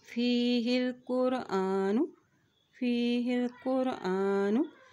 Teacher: हमज़ा के ऊपर खड़ी ज़बर है, इसलिए इसको एक हरकत लंबा अदा करेंगे।